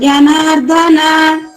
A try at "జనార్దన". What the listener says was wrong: జనార్దన. ఇక్కడ ధ ఒత్తి రాకూడదు, జనార్దన